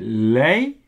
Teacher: But you know, it's a place of your tongue. So if I say lei, maybe it sounds more like R to some people, or maybe more towards L to some people. It's really between.